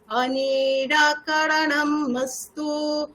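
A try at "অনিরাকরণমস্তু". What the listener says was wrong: অনি কেন? অনি, নি দীর্ঘ কি আছে? অনিরাকরণম অস্তু।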